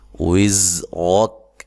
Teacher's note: زا کو زور سے ادا کرنا ہے، سیٹی سے ادا کرنا ہے، ٹھیک ہے۔ را کو موٹا ادا کرنا ہے اور کاف کو ساکن کر دینا ہے۔